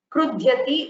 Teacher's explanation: It is not the dakara, it's dhakara. It's the Mahaprana letter.